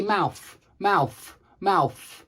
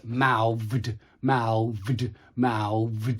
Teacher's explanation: usually does to make these two sounds what it does is it uses an f for the voiceless and it uses a v for the voiced